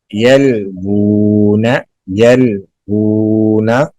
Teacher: واؤ پہ الٹا پیش ہے، اسے لمبا کریں گے، جتنا واؤ مدہ کو کیا جاتا ہے لمبا